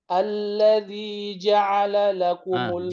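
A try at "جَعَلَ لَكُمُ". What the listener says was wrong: enggak jangan nyenggol ain. Ja'ala lakum.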